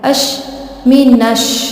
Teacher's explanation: الف کے بعد حروف شمس ہے تو اسی لیے یہ حروف شمس کو بھی ہم نے اوپر ڈسکس کیا. الف کے بعد لام کے بعد حرف شمس ہے تو لام سائلنٹ کر لیں گے